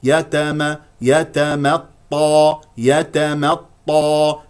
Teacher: ثانيه والطاء اي طاء مفتوح جاء بعده الف مفخم مرتبه اولى والطاء الساكن مفخم مرتبه رابعه